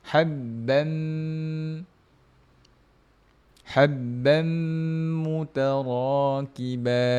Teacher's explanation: Habbam kita masukkan terus ke dalam huruf huruf mim. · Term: idgham maal ghunah, idgham ma'al gunnah